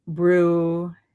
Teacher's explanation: It's pronounced roughly as bruheria with the emphasis on the third syllable